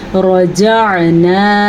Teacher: مد کو آپ نے لمبا کرنا ہے، یہ والی مد 3 حرکات عربیہ کے برابر ہوتی ہے